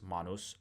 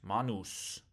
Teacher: And so notice that the difference between the nominative and the genative is just the lengthening of the vowel of the u in the uh in the in the case ending of the genative singular.